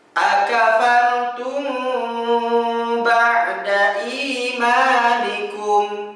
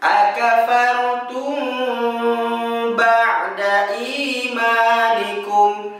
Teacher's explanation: Setelah kita mempelajari nun tasydid dan mim tasydid pada halaman 142, maka kita akan fokus pembahasan pada halaman 151, di mana 151 ini kita akan menemukan bunyi yang berbeda, ialah mim sukun bertemu dengan huruf ba. Ya, kalau dalam istilah ilmu tajwid ini adalah ikhfa syafawi, di mana cara baca tersebut ditahan ya suara kita selama 2 harokat.